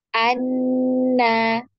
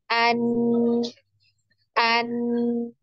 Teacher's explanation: Ketika kita mengucapkan huruf nun, ini ada pertemuan antara lidah dan gusi bagian atas ya. Ujung lidah ya.